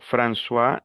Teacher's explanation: Hay personas que dicen, "Tú hablas francois." François, la palabra francois existe, significa Francisco, porque la o con la i es ua